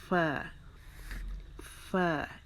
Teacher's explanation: اوپر کے سامنے کے جو دو دانت ہیں ان کی نوک نچلے ہونٹوں کے گیلے حصے پہ، جو کہ ہمارا جہاں سے حرف با ادا ہوتا ہے، با، ہمارے ہونٹوں کو بار بار جہاں پہ ہماری زبان لگتی ہے تو ہمارے ہونٹ گیلے ہو جاتے ہیں، ادھر سے ہمارا فا بھی ادا ہونا ہے.